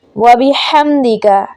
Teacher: ہا کو در حلق کے درمیان سے پڑھا جائے گا